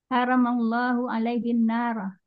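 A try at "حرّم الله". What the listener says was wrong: Haknya tasydid haramallahu.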